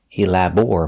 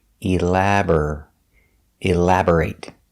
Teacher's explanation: pronation elaborate elaborate the stress is on the second syllable elaborate b r is pronounced bur not bore